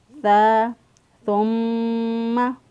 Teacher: سا جو ہے اس کی ادائیگی میں سیٹی جیسی آواز نہیں آنی چاہیے، سا کو نرمی سے ادا کریں گے۔ ذال اور سا ان دونوں کا مخرج سیم ہے، تو ذال جو ہے جس طرح اس کی آواز میں سیٹی جیسی آواز نہیں آتی، اس طرح سا میں بھی سیٹی جیسی آواز نہیں آئے گی۔